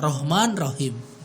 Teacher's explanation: Rahman pakai ha, tenggorokan bagian tengah, kita hajar nih pakai ha, Rahman Rahim.